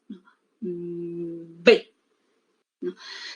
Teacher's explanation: mi labio inferior choca con el labio superior se cierra en un momento y luego sale el aire me sale como una explosión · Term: oclusivas